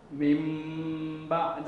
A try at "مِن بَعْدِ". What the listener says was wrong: هذا الذي أحذر منه، لا تكز الشفتين. ليس من، ليس من، لا. من بعد. أي نعم، اجعل الإطباق خفيف. لا هكذا، لا تجعلها هكذا، أنا أريدها خفيف. الشفتين يوضع، تضع الأعلى فوق الأسفل فقط.